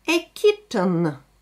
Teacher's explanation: И сразу после «т» мы слышим звук «н».